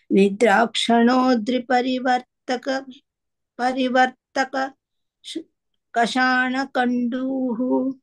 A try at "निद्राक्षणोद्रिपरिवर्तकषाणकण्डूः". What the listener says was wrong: परिवर्तकषाणकण्डु only one ka